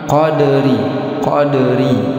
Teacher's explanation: Qadri ini ra berbaris bawah, ini tarkik dibaca tipis.